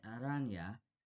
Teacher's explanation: finally i'd like to add the tap or flap r as in aranya